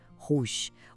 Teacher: O R vem lá do fundo da garganta, sabe? E o final tem aquele somado que lembra a palavra garagem.